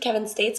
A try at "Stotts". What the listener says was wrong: Stats. Looks like States, pronounced like Stotts. Kevin Stotts.